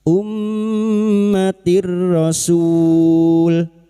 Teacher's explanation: mim yang bertasdid guna musyaddadah, kita dengungkan selama 3 harokat. Ummatir rasul.